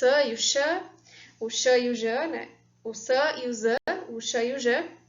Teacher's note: Essas são, sim, fricativas e que ocorrem de maneira comum na coda silábica